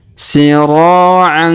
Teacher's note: huruf ro kita panjangkan 2 harokat karena terdapat alif di depannya.